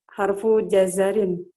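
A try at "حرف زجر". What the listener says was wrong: Za dulu baru ja. Harfu zajarin. Jadi za dulu, kemudian ja baru ro ya. Za jim baru ro.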